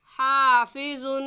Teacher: الف سے پہلے زبر آ گیا ہے اس لیے الف مدہ ہوگا، اور الف مدہ کو 1 الف کے برابر کھینچ کر پڑھتے ہیں